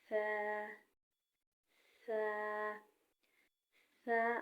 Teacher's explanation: ثا، ثا، ثا ادا کرتے وقت سیٹی کی آواز نہیں آنی چاہیے اور نرمی سے ثا کو ادا کریں۔ زبان کو تھوڑا سا باہر نکالے تو ثا کی آواز نکلے گی۔